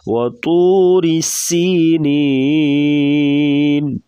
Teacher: تو کو پور پڑھیں گے، موٹے حروف سے ہے.